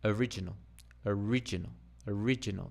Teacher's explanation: Now the stress has changed from the oh to the ri.